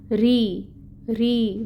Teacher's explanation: इलाफिहिम रॉ, रॉ जो है यहाँ पे कसरा के साथ है। जब रॉ के नीचे ज़ेर है तो इसको हम बारीकी से पढ़ेंगे और ज़ेर की हरकत को 1 हरकत के बराबर पढ़ेंगे, 1 काउंट।